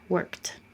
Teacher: It's voiceless, so it stays voiceless. Your voice is off, leave it off